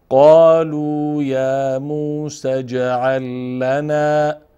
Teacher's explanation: جیم هم ساکن هست، از جمله حروف قلقل است، اندکی میلرزنیم